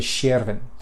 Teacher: in Norwegian the S next to a consonant like that makes a sh sound, and then the J makes a y. So it was actually Sjerven, so Sjerven.